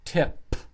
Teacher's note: It's not E, it's not teep, it's tip. Final sound is P. The lips are touching and they push out air. This has to be strong.